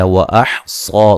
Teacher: لدی یا لین ہے، ہیم میم ساکن کا اظہار ہے. وَأَحْصَى صاد کو موٹا ادا کریں گے، مد اصلی ہے